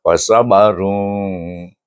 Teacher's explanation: Sad alif ba huruf qalqalah duduk di tengah kalimah, baca dengan qalqalah sugra. Fasabarun. Baik.